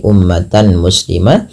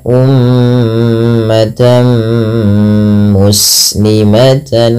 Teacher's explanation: tanwinnya dimasukkan ke huruf mim tidak lagi terdengar bunyi umatan muslimah tapi diganti dengan huruf mim